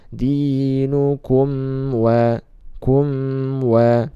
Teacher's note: mim sukun bertemu waw, sama juga idhar syafawi, dibaca jelas juga.